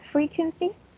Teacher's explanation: It has 3 syllables and the stress is in the first one.